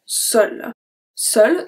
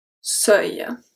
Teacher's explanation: the EU is a closed sound because we have the L at the end